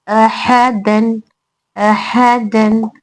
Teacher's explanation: دیکھیے یہاں پر اور ح میں حرکات ہے جلد پڑھیں گے پھر دال میں تنوین ہے نون ساکن کی آواز کے ساتھ پڑھیں گے